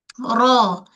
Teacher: Ro dia ada getaran pada ro itu sifat tunggal.